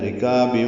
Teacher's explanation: رکاب را باریک ہے، کاف باریک الف مدہ ہے۔